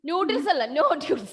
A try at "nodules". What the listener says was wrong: Nodules. Not noodles. Nodules. Very good.